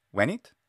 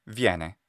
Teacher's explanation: Stressed short E became ye.